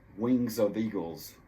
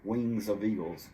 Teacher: You do have that F sound, which turns into a V sound.